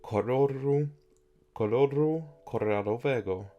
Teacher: I'm also not rolling the R correctly